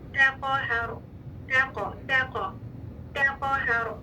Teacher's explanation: قاف مفخم کلکلا کے ساتھ، پھر ہا مرقق، پھر رو مفخم. تقاہر، تقاہر، ہا موٹا نہیں کرنا، تا موٹا نہیں کرنا.